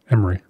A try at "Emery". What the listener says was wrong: It's like skip the middle I.